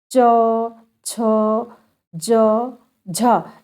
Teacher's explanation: मुख द्वार को बंद करके इस प्रकार बोलते हैं कि जिह्वा उच्चारण स्थान को रगड़ती चलती है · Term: स्पर्श संघर्षी व्यंजन